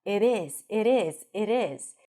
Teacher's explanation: If you aim for American English, the T sounds a little bit like a D. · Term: flap T